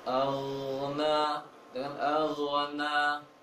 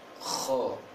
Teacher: Kalau kho posisinya sama. Tapi kalau ghain ditahan anginnya di tenggorokan seperti air mendidih, menggelegak di tenggorokan. Sedangkan kho ditiupkan angin keluar. Sedang ghain posisinya sama, tenggorokan atas, maka ditahan.